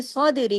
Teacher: स्वाद में स्वाद को आपने हैवी करना है दाल पे आपने कलकला करना है